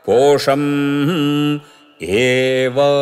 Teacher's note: పో ఉదాత్తము షం స్వరితం దీర్ఘ స్వరితం అవుతుంది పదాంతం గనుక పోషం ఏవ ఏ అనుదాత్తం వ ఉదాత్తం